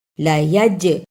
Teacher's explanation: جیم جزم کی صورت میں حرف قلقلہ ہے، یعنی اس حرف کو ہلا کر پڑھا جاتا ہے